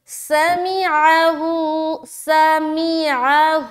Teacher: سین کو سیٹی کی طرح، میم بہت ہی آسان ہے، عین کو حلق سے نکالنا ہے، ہوں میں کھینچیں گے ایک الف۔